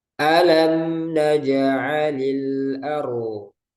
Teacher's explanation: Nah, huruf sebelumnya di sini fathah. Nah, itu keadaan ro dibaca tebal. Jadi ro sukun sebelumnya fathah.